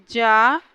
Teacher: ज अल्पप्राण घोष है और तालव्य